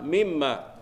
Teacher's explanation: Mimma atas mim ada syaddah, wajib al-ghunna.